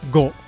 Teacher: It's not go. You don't round your lips like go. It's just go.